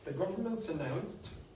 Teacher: I almost didn't pronounce the T, but this S migrated. >> Yeah. With the next vowel.